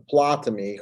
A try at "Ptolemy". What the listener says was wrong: This is Ptolemy. I mean, the P is silent. This is Ptolemy.